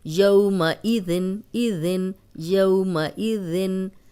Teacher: سیٹی والا نہیں ہے یہ ذال ہے اور سیٹی کی آواز نہیں آنی چاہیے · اوپر سامنے کے جو دو دانت ہیں ان کے کنارے پہ زبان رکھیں اور ادا کریں